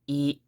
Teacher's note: don't go up or down in your voice too much kind of maintain a little bit of a monotone feel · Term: very flat sound